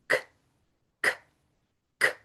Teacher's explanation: If you make them slow, k, k, k, you can feel your tongue pull back · We have to pull back the back of our tongue to make those. So k and g.